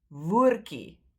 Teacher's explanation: Then it becomes woordkie, woordkie. But we tend to skip the D, and that ye at the end is pronounced ki, woordkie. Right, so keep that in mind.